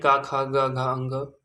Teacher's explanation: क वर्ग का उच्चारण स्थान कंठ है।